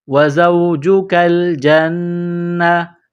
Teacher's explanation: نون مشدد ہے تو آواز ناک میں چھپائیں گے، غنہ کریں گے